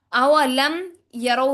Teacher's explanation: रॉ मोटा होगा क्योंकि रॉ से पहले रॉ के ऊपर जबर आ गई है